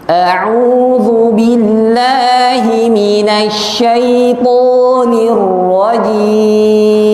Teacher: Kita baca jim 4 harokat.